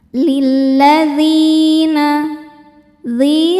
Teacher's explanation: Lilladzina dzi hukumnya mad thobi'i zohiri. Sebab ya sukun sebelumnya baris kasrah. Cara bacanya panjang dua harakat.